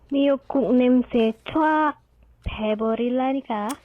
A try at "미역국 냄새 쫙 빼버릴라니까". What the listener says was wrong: Ooh, very nice, but there are some things, mostly the double consonant ones, that need some help here. Yeah, so 짝 and 빼. 짝, jwak. Wah, jak. We don't say 쭈아, but 짝. It's different than 짝. 짝. 짝, 짝.